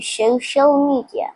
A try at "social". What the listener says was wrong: Social. It's not show. So.